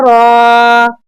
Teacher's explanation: را پر ایک کھری زبر ہے، لہٰذا ہم اسے کھینچ کر را کا گاڑھا تلفظ کریں گے